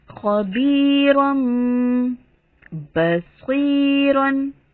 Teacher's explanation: رم میں غنہ ہو گیا ایک الف برابر اور با کی آواز سختی سے ادا ہوئی